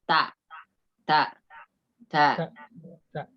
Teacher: ujung lidah bertemu dengan pangkal seri atas sama dengan huruf ta